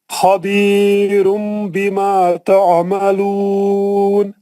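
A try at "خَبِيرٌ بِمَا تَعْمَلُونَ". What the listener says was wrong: دوبارہ پڑھے تو غنہ اچھا کرے.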